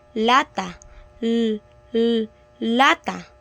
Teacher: Kapag sinasabing pagilid, ibig sabihin ang hangin ay lumalabas sa gilid ng ating dila. At kapag sinasabing panggilagid, ibig sabihin ang dulo ng ating dila ay dumidikit sa gilagid. · Yung dulo ng dila dumidikit sa gilagid tapos yung hangin lumulusot sa gilid. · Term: pagilid na panggilagid